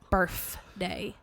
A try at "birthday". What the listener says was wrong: You didn't really enunciate the F.